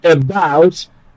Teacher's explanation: That prefix is not stressed, so stress naturally is placed on the second syllable